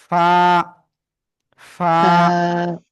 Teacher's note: নিচের ঠোঁটের পেট, উপরে দুই দাঁতের আগায় লাগাবো, লাগিয়ে এই যে হালকা ফাঁকা দেখতে পাচ্ছেন না, ওইটা দিয়ে বাতাস বের হবে।